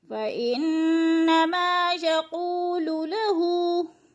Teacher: यक़ू की क़ाफ को पुर करके पढ़ेंगे और क़ू पे वो मद्दा है, वो मद्दा को थोड़ा सा खींचना है एक अलिफ के बराबर।